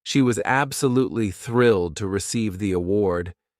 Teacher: you notice how some words are stressed. Thrilled. Award, while others are spoken quickly. She was. This helps you sound more natural when speaking. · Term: stress pattern